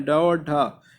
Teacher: ये मूर्धा से बोला जाता है, इसलिए मूर्धन्य ड और ढ ये दो होते हैं